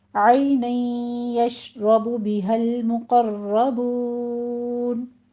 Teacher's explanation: عین وسط حلق سے نکالتے ہوئے